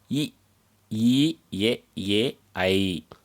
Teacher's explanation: வாயை திறப்பதோடு மேல்வாய் பல்லை நா விளிம்பு தொடுவதனால் தோன்றும் எழுத்துக்கள்